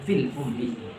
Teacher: Apabila ada ia kasrah fi, ya, fil ummiyina bertemu dengan sukun, panjangnya cukup 1 alif. Nggak boleh terlalu panjang.